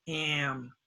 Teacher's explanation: If the A is before the N or the M, it becomes in the nose, nasal.